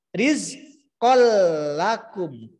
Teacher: Jadi idgham bila guna bacaan lebur dengan tanpa dengung ya. Bacaan lebur tidak dengung.